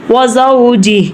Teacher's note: ہم ہا کے نیچے جو حرکت ہے کھڑی زیر والی، تو ہم اس کو ادا نہیں کریں گے، ہم صرف ہا کی خالی آواز نکالیں گے، جو بھی حروف آ جائے اس کی آواز نکالیں گے، اس کی حرکات کو نہیں پڑھیں گے۔ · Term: وقف